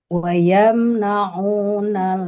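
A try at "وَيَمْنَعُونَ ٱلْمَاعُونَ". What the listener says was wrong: kepanjangan maknya. Wa yamna'unal ma'un. yang 2 harokat jadi lebih.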